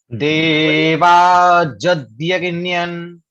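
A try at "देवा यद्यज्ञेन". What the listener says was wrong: हाँ, जदियज्ञन, बहुत सुंदर, है ना, देवा जदियज्ञन,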